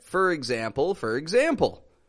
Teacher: We pronounce this as fur when it's in the beginning of a sentence.